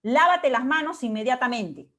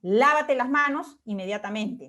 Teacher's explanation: El tonema se produce de manera ascendente. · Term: oraciones exhortativas